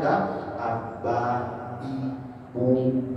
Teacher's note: Kalau bahasa jawaok tadi dia enggak b maka pakai perut bagian ba bi bu ditahan jangan sampai ada angin